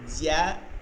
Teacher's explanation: জিহ্বার মধ্যখান আর তালু থেকে 3টা হরফ, জিম শিন ইয়া। এর মধ্যে জিহ্বার মধ্যখান বরাবর তালুতে হয় হচ্ছে জিম, দেখেন এটা শক্ত হয়